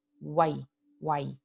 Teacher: Y vemos que la A es la vocal pura o completa, mientras que W y Y se pronuncian como semivocal. Tienen una pronunciación más corta.